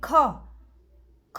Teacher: મહાપ્રાણ કહીશું અહીંયા તમે જોઈ શકો છો આપણે બોલીએ ક અને ખ બોલીએ એટલે આપણા મોઢામાંથી હવા વધારે બહાર નીકળે છે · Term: મહાપ્રાણ ધ્વનિ